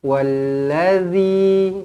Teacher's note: zal makhrajnya di hujung lidah. Bila di hujung lidah dia akan jadi lembut. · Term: huruf zal